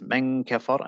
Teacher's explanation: the ghunna has to start straight away · I would keep it close to the makhraj of the kaf, and I would insert the noon, the ghunna as well at that same time, maybe.